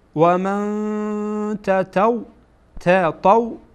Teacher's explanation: بعد از نون ساکن تا آمده و تا از حروف اخفا هست، بنابراین نون را در اینجا اخفا میکنیم، یعنی میپوشانیم